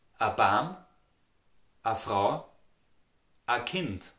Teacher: in the Austrian dialect, the indefinite article ein und eine are pronounced like a